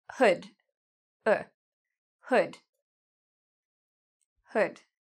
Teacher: So it's a short sound, hood. My mouth isn't really open that much. Hood. So this is actually this sound.